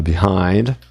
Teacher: Então a tônica tá no INá na ortografia um I com N.